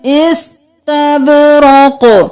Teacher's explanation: बा कलकला, कौफ कलकला, सीन को साकिन रखना है, इस्तबरक़ नहीं करना, इस्तबरक़।